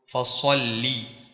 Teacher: لام کے اوپر تشدید ہے اس لیے لام 2 مرتبہ پڑھا جائے گا، 1 مرتبہ صوت کے ساتھ اور 1 مرتبہ اس پہ زیر ہے، اس کا زیر پڑھیں گے ہم خود۔